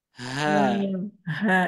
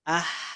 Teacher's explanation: kalau H besar ini dari pangkal tenggorokan kalau H itu dari tengah tenggorokan